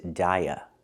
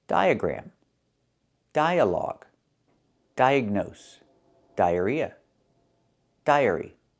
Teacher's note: There are a lot of them, because this is the most common pronunciation of D-I-A. The I makes the long I sound, like hi and bye, die, and the A makes the sound, like cup and up. It's closed and relaxed, And we link these two vowels with the sound y, like in yellow and yesterday, die, y.